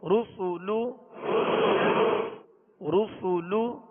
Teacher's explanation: سین کو سیٹی کی آواز میں باریک پڑھیں گے